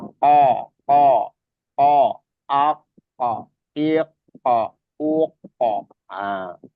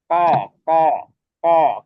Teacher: lidah paling dalam atau anak lidah di situ tempatnya qof